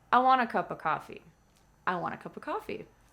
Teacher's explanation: Notice that the subject, I, is not stressed.